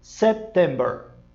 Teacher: você tem que dar uma brecadinha na letra P. Ele é muito suave, mas ele é necessário. Você não pode, só porque uma letra muda, Você não pode dizer September, tá?